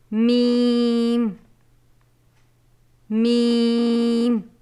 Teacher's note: دونوں ہونٹوں کی بیرونی طریقے ملنے سے